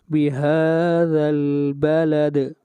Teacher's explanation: اور دال کے اوپر قلقلہ ہوگا، آواز کو ہلائیں گے